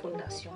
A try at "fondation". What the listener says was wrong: Fondation. No, not Fondation. No, you're saying funda.